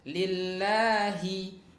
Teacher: pada lillah itu juga jangan dibaca he ya. Hi ya, sempurnakan harokat kasrah hi ya.